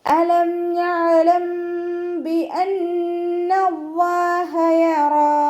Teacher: മീം സാക്കിനയ്ക്ക് ശേഷം ബ വന്നു കഴിഞ്ഞാൽ മീം സാക്കിനയെ മറച്ചു വെച്ചിട്ട് മണിച്ചോതി കൊടുക്കുക · അലം ഇവിടെ മീമിന് ഹാഫ് സുക്കൂന് കൊടുത്തിട്ട് ഉച്ചരിക്കുക. ഐനിനും ഹാഫ് സുക്കൂന് കൊടുക്കുക കേട്ടോ. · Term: ഇഖ്ഫാഉ ഷഫവി